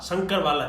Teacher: क्योंकि इसका उच्चारण स्थान तालु है, इसलिए इसको हम तालव्य कहते हैं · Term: तालव्य श